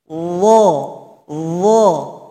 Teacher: ujung lidah ditempelkan kepada ujung gigi seri atas dan ujung gigi seri bawah seperti tergigit. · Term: huruf dho